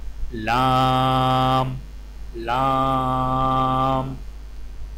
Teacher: اوپر والے دانتوں کے مسوڑوں سے لگا کر باریک آواز میں پڑھیں